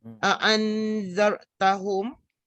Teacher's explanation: dibacakan antara izhar dan idgham tanpa sabdu serta didengungkan sekadar 2 harakat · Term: ikhfa haqiqi